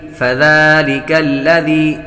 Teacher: دال پر کھڑا زبر ہے، اس لیے اس کو لمبا کریں گے، ایک الف یعنی دو حرکات۔